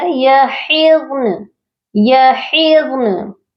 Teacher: نون کو بھی آپ نے ساکن کرنا ہے، نون کی حرکت کو نہیں پڑھنا. تو یحضن نہیں پڑھا جائے گا، یہ پڑھا جائے گا یحضن یحضن.